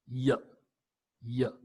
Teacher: Y is a palatal semi-vowel. · The palatal Y, you find an active articulator is the front of the tongue. · So the active articulator is nothing but the blade of the tongue, especially the front of the tongue.